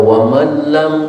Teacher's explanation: Yang perlu diperhatikan dalam bacaan tadi di antaranya adalah waman lam, nun mati ketemu lam, idgham bila gunna atau disebut idgham tam, idgham yang sempurna, sehingga tidak terdengar lagi suara nun matinya, yang terdengar malah tasdid lamnya